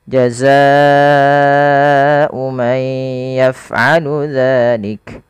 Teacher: kita panjangkan empat harakat karena di sini ada bacaan namanya mad wajib muttasil yaitu adanya Mad yang disebabkan karena adanya Hamzah yang terletak setelah